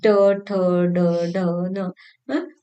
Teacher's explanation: वैसे ट वर्ग में देखिए ट, ठ, ड, ढ, न। तो तालु के दूसरा हिस्सा जो है तालु का, जिसे मूर्धन्य कहा जाता है, तो उससे निकलने वाले ये ध्वनि है